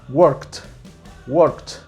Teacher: La letra K es el sonido final, work. No hay vibración y tenemos por ende el sonido T